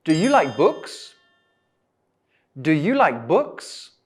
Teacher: So in the first question, my intonation goes up at the end.